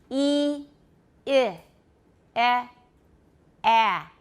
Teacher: So my lips are going from very spread to more relaxed, right? As I open my jaw, then there's just a.